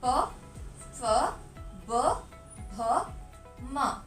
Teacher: जब हम प रो को पढ़ते हैं तो हमारे दोनों होंठ एक दूसरे से मिलते हैं। जैसे प को पढ़ने से हमारे दोनों होठों में संपर्क होता है।